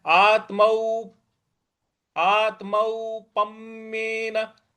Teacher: आत्मौ यहां जो आधा त है इस पर हमको आघात देना है